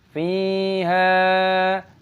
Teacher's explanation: all are mad thabi'i, lengthened two counts